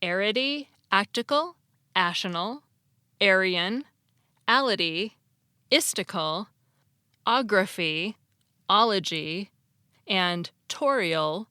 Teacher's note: The suffixes arity, actical, ational, Aryan, ality, istical, ography, ology, and torial are all dactyls